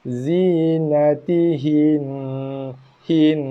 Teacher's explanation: Bila waqaf pada huruf yang terakhir dibaca dengan baris sukun, baris mati. Tapi bacaan dengung dikekalkan. Sebab bacaan sabdu tu terkekal ada kat situ.